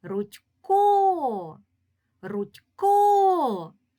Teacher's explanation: себе Рудько Рудько Ми добре чуємо що останній склад буде наголошеним у цьому слові наголошений другий склад